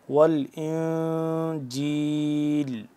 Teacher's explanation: ہو رہا ہے ساکن، تو یہاں پہ ہم اخفا کریں گے، نون ساکن ہو گیا تو اخفا کریں گے، یعنی کہ آواز کو ناک کے اندر لے جا کر پڑھیں گے۔